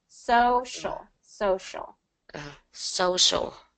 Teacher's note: you want to make sure that you have the S and then the sh